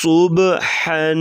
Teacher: صاد کو موٹا کریں گے سیٹی جیسے آواز نکالیں گے اور ہا کو گلے سے ادا کریں گے باریک آواز